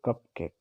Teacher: इसी तरह से स्पॉन्डी भी होता है, equal stress for both syllables as in कप केक। इसमें इक्वल सिलेबल्स होते हैं, चाहे वो इक्वल स्ट्रेस सिलेबल, यानी इसमें जो है जितने भी सिलेबल होंगे वो इक्वल होंगे और स्ट्रेस सिलेबल ही होता है केवल इसमें।